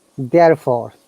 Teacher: in british ipa or british accent we do not pronounce r if it's at the end of the word